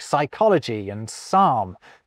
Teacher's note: we pretend the P isn't there when we pronounce Greek-derived words like psychology and psalm